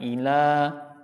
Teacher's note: Si huruf lamnya dipanjangkan. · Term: alif maqsurah